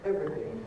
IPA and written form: ˈevriθɪŋ (everything)